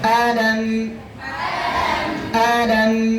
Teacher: মিমের মধ্যে বাতাস বন্ধ আওয়াজ অল্প চালু তাওয়াসসুত